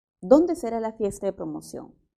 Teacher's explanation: Comienza con ¿dónde? Entonces su tono no tiene por qué subir. Su tono es descendente.